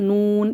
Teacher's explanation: लाम और नून एक ही जगह से अदा होंगे, यानी कि ऊपर वाला जो हिस्सा है उसके साथ जो तालू है इसके साथ हमारी ज़बान टच होगी तो नून, ये ज़बान की नोक हमारी लग रही है इधर, नून, इस तरीके से होंठ बिल्कुल गोल करके पढ़ना है।